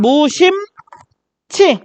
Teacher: 이 히읗이 뒤에 나와 있는 지읒과 합쳐져서 치가 됩니다. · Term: 축약